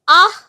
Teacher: আর তার ফলেই আগে থাকা স্বরধ্বনির যে উচ্চারণ স্থান সেটা ওরও উচ্চারণ স্থান হয়ে যায়। যেমন যখন আমি আহ বলছি আ এর উচ্চারণ স্থান কন্ঠ। তাহলে এখানে বিসর্গের উচ্চারণ স্থানটাও কন্ঠ। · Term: আশ্রয় স্থানভাগী ধ্বনি